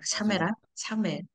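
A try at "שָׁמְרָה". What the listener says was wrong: 샴라가 아니고 쇼므라라고 발음해야 돼요. 쇼므라. 쇼므라. 카메츠가 이게 바뀌어요. 뒤에 요 쉐바가 있으면 바뀌어요. 자, 쇼므라.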